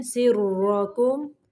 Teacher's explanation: را کو موٹا پڑھنا ہے